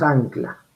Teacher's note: Mire, velarizo la N, la N se convierte en velar porque está antes de la velar K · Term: nasal, velar, sonora